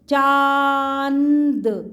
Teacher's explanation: चांद बोलोगे तो ओपन माउथ जाएगा और नोज से आवाज आएगी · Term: चंद्रबिंदु